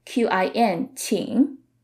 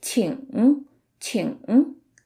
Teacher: Now, depending on which part of the Chinese-speaking regions you're in, you might hear the ng part a little differently. In southern parts of mainland China, sometimes people would drop the g at the end and just say it like qin, 请. But in northern parts of mainland China, people say it in the more standard way, 请 请.